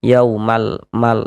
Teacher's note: dibaca izhar itu dibaca jelas. Ada bunyi lam sukunnya. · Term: izhar qamariah, alif lam qamariyah